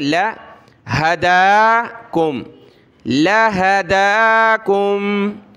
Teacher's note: ہا، دال کھڑا زبر دا، لہدا، کاف میم پیش کم، لہداکم، دال کو ایک الف کی مقدار اوپر کھینچا، لام کو نہیں کھینچنا